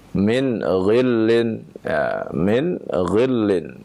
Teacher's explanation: nun sukun bertemu ghain, kita baca dengan idhar